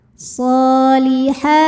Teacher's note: panjang dua harakat wail ha ha hukumnya adalah Mad Thobi'i muqaddar karena huruf ha berbaris fathah panjang maka kita bunyikan panjang h-nya dua harakat